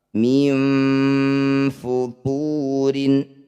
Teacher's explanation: Nun sukun bertemu fa disebut bacaan ikhfa awsat. Bunyi nun dengungkan 2 harokat. Ketika dengung lisan kita sudah bersiap di fa.